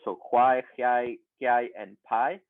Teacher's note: with a long vowel and an offset J glide